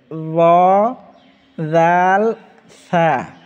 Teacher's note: জিহ্বার আগা বের করে সামনের উপরে দুই দাঁতের আগার সঙ্গে লাগায়ে এই তিনটা হরফ উচ্চারণ হবে।